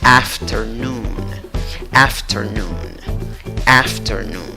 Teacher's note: La segunda sílaba no lleva una E, aunque hay una E en la escritura. La segunda sílaba se pronuncia con schwa, la que no es ni A, ni E, ni O. · La última sílaba, contando de izquierda a derecha, es la que lleva la fuerza de voz, la que ves que he pintado de amarillo.